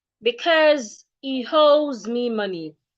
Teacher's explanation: Take a short pause and then continue because he owes me money. The S in because and the S in owes sounds like Z.